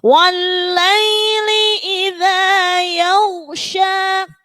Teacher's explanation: Jadi tangga nadanya itu naik dulu. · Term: lagu ros